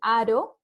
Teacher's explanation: la vibrante simple que es por ejemplo para decir aro ya que el aire suena un poco más suavecito